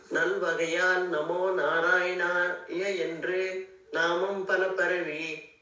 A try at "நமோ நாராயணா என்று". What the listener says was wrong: இங்க வந்து நாராயணா யா வராது. அதனால நல்வகையால் நமோ நாராயணா என்று. நாராயணாவென்று